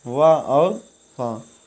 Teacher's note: दंतोष्ठ निचले ओंठ और ऊपर के दांतों से